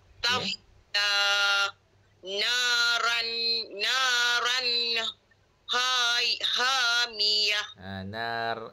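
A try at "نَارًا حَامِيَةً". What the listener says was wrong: Naron ke naran? Ron, R-O-N. Naron hamiyah.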